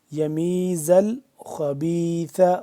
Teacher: ساتھ، بیچ والا جو الف ہے یہ سائلنٹ ہے. یمیز الخبیث، خوا کو موٹا کر کے پڑھیں گے